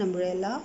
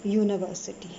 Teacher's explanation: Now see, umbrella and university both starts with the letter U, but their pronunciation is very different. Umbrella starts with the a sound, that's a vowel sound. University starts with a y sound, that's a consonant sound.